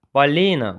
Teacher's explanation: Balina vurğu i-yə düşür. İkinci hecadadır,